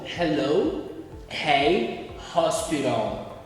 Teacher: o H em inglês lê-se como se fosse R, muito carregado.